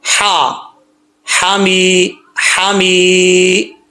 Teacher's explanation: ہا بریک ہے، اس کا تعلق گلے سے ہے